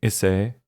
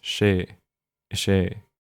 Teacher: the S becomes slender before a lot of the pronouns